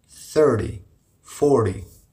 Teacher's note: so in numbers 13 to 19 the stresses on teen but in numbers 30 to 90 the stresses on the first syllable